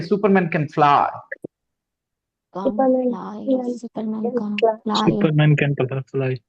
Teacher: we don't stress can we don't put any emphasis on can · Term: no stress on can